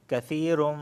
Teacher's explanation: تنوین کے بعد میم آئی ہے، یعنی میم آیا ہے، اور میم حروف یرملون میں سے ہے تو یہاں پر ادغام اور غنہ دونوں ہوگا